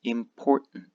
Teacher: Both of these T's disappear, and we just have an N.